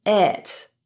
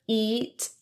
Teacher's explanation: the i in it is on the other hand pronounced with a lower pronunciation than e